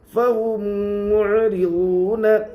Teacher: میم کے اوپر جزم ہے، میم ساکین کے بعد میم ہے اس لیے میم کو میم سے ملا کر گنہ کے ساتھ پڑھیں گے